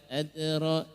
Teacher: huruf dal di situ dia sukun maka mantul sifatnya, tapi karena dia di tengah maka bunyinya adalah qalqalah yang sugro. Qalqalah yang sugro, ya, sugro artinya kecil, ya.